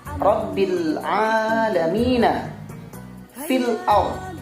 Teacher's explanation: alif lam qamariyah ini dibaca dengan jelas, karena di bacaan alif lam qamariyah juga bisa dikatakan dengan izhar qamariyah. Jadi pembacaannya harus jelas.